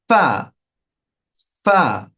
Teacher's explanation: দুই ঠোটের পেট সামনের উপরে দুই দাঁতের আগার সঙ্গে স্পর্শ করে এটি উচ্চারণ করা হয়